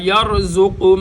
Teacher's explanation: زا سختی کے ساتھ را موٹا